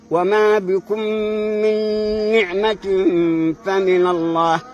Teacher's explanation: الميم الساكنه تدغم عند مثيلتها تدغم بحيث يشيل الحرفان حرفا واحدا مشددا